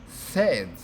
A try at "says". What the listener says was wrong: That's better.